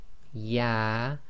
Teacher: So we've got the letter ya, ya, which is almost exactly in the middle of the mouth, i.e. your middle of your tongue touching the top hard palate in the middle of your mouth.